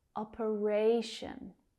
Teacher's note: That third syllable is stressed.